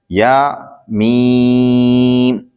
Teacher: یا زبان کے درمیان تالو کے درمیان سے ادا ہوتا ہے